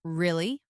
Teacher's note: when they are surprised, their voice goes up. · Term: intonation